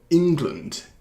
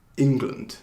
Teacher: 영어로는. 그래서 첫 번째 syllable를 좀 강제하는 거예요